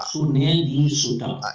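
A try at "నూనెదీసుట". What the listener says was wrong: It is nu andi. Nu. It is not su. It is nu. Nune disuta.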